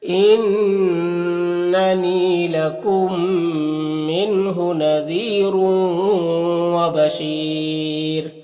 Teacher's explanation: یہاں پر یا مدہ ہے، ایک الف کے برابر کھینچیں گے، اور یہاں پر وقف کریں گے تو یہ را کی دو پیش ہے یہ سکون سے بدل جائے گا، تو پھر را کو باریک پڑھیں گے اور مد عارض وقفی بھی ہوگا، تو اس طرح سے پڑھیں گے۔